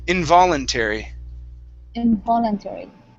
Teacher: so our stress is right on that vo